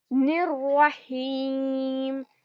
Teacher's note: را پر شدہ آ رہا ہے تو اس کو ہم 2 بار پڑھیں گے، نررحیم۔ را کو 2 بار پڑھ کر یہاں پر پھر سے یا مدہ آ رہا ہے، یا ساکن ہے اور اس سے پہلے زیر ہے تو اس کو ہم یا مدہ بولتے ہیں اور 2 کاؤنٹس کھینچ کر پڑھتے ہیں۔